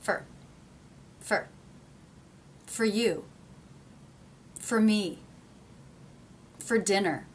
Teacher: the word for part of a whole becomes fur